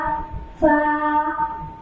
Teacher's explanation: নিচে ঠোঁটের পেট সামনের উপরে দুই দাঁতের আগার সঙ্গে লাগাইয়া ফা